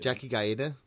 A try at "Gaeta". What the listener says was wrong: Gaeta. No, you pronounce letters that aren't there. Gayda.